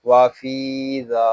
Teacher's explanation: فا کو اور ذال کو ہم ایک الف تک کھینچ کر پڑھیں گے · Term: حرف مدہ